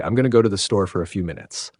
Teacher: It's the rhythm. The way function words like am, to, for, a get softened, reduced, or even dropped in fast, natural speech. Without that reduction, the sentence sounds robotic or broken, even if the grammar is mostly right.